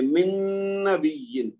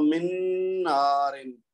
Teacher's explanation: نون کی آواز نون میں مدغم ہو جائے گی اور غنہ کے ساتھ، یہ جیسے من اور نارن ہے تو من نارن، ٹھیک ہے جی۔